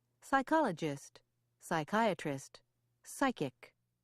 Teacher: PS at the beginning of a word is pronounced as an S